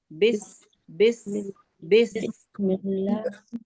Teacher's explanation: سین کا مخرج پڑھا، بس بس بس ہے نا، آواز آ رہی ہے سیٹی جیسی